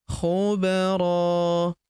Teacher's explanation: tanwin an berubah menjadi fathah. Lalu kita panjangkan dua harakat ya karena kita hentikan bacaan kita di sini. Alifnya tidak dibaca atau dianggap tidak ada. · Huruf ba berharokat sukun kita pantulkan atau kita qalqalahkan